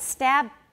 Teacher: stab i only voice it halfway through